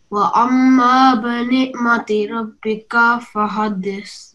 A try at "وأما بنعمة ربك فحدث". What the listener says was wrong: Meme mushaddad again.